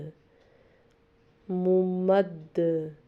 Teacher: دال چونکہ حروف قلقلہ میں سے جب یہ ساکن پڑھیں گے تو اس پہ قلقلہ کریں گے